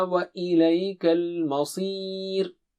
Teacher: صي is very thick and high